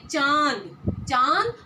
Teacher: हम बोल रहे हैं तो हमारे गले से और नाक से आवाज निकल रही है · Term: अनुनासिक